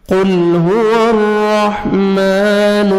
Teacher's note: قاف کو موٹا کر کے پڑھنا ہے، لام کو ہم نے ہلانا نہیں ہے